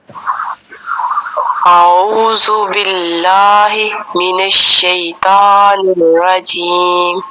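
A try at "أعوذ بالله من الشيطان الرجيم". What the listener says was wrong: ایک تو دیکھیں جیم سے ناک کے اندر آواز جا رہی ہے آپ کی، ٹھیک ہے؟ یہ نہیں جائے گی۔ دوسرا بسم اللہ اعوذ میں جو ذال ہے نا، اس کو نرمی سے پڑھنا ہے، اعوذ، اور دیکھیں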